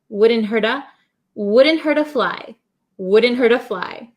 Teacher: the T becomes a flap T so it sounds like a soft D sound